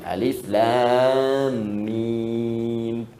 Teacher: Alif harful hawa, lam ke lisan, mim di bibir